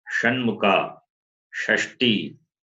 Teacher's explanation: Sha is cerebral, murdanya. The tongue should touch the roof of your mouth